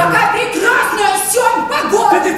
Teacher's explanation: Каждое слово как будто качается на волнах. И в конце предложения интонация вверх, как на горочку.